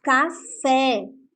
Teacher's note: última sílaba quando aqui nós temos o exemplo da palavra café o pé é pronunciado com mais força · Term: sílaba tônica